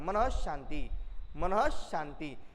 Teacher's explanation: मी मन शांती असं म्हणत नाही, मनः शांती असं म्हणतो. म्हणजे ह या वर्णाला झटका दिल्याप्रमाणे विसर्गाचा उच्चार होतो